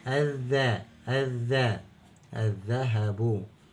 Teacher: الكلمه مفتوح بندخل على طول على الحرف اللي بعد اللام وهنا حرف الذال ويصبح مشدد وننطقه مرتين مره ساكن او نسمع صوته مرتين مره ساكن ومره متحرك · نشوف الذال تحولت الى حرف مشدد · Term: اللام الشمسيه